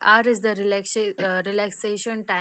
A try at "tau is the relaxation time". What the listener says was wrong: tau is the relaxation time, not r, tau.